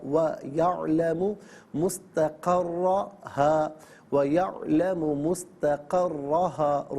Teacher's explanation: را پر زبر ہے، پر پڑھیں گے، تشدید ہے، جماؤں کے ساتھ پڑھیں گے